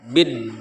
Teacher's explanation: dari ba ke dal diidghamkan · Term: alif lam syamsiah